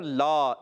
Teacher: اس الف کو کھینچنا ہوتا ہے. یہ لا جو ہے یہاں کھینچ کر ادا کریں گے. ایک الف اس کو کھینچنا ہے.